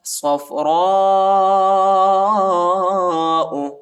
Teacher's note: صاد کو فا کے ساتھ ملائیں گے، را کو موٹا پڑھیں گے